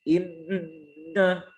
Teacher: Ya, itu menandakan bahwa huruf nun yang bertasydid itu lebih jelas gunnahnya dibanding ikhfa